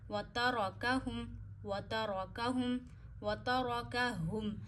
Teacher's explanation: ہا گلے کے اینڈ سے ادا کریے